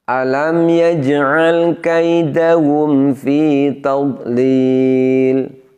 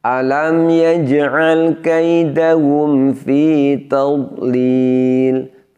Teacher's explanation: Semestinya dhad sukun tidak boleh ada bunyi pantulan.